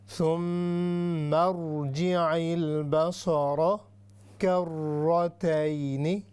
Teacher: یہ را ہے، ہیوی ہے، ساتھ میں مشددہ بھی ہے، یعنی اس پر شد ہے